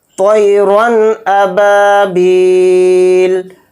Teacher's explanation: را کے اوپر تنوین ہے، تنوین کے بعد حمزہ آ رہا ہے اور حمزہ اظہار حلقی کے 6 حروف میں سے ایک حرف ہے، تو اس لیے را دو زبر رن میں جو نون کی آواز آ رہی ہے اینڈ میں، اس میں اظہار کر کے یعنی ظاہر کر کے بلا غنہ کے پڑھیں گے